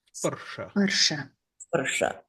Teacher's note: It's a palatal sibilant, shra, and all the vowels are short.